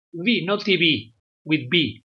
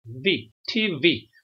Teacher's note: es TV, con el diente al labio